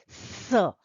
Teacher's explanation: दांतों के पास जीभ आती है और वहां से वायु निकलती है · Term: सरोते वाला स